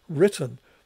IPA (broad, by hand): ˈɹɪtən